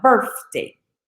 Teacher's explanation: So instead of saying birthday, speakers of African American English have the F sound, birthday.